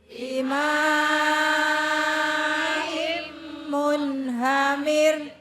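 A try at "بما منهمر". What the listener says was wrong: Jangan gede-gede, mir. Ini tawalud, Bu. Rohnya kudu ngikut. Gak boleh gak ngikut. Kalau rohnya ini gak ngikut, artinya bukan curah. Dicurahkan dengan air. Bimaim munhamir itu dengan air curah. Itu kalau rohnya nggak ngikut, repot. Ya, ini ibarat rohnya itu kan kepala.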